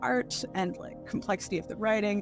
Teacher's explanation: They're using a lot of very vocal fry.